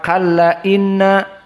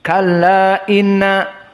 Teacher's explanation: qasrul mad al munfasil, kalla dibaca hanya 2 harokat